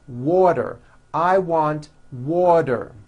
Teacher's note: the t turns into a d and the whole word is voiced